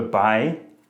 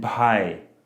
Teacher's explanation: So bhai and bhai. There's a difference there, and it's that I aspirated the second word, brother, bhai.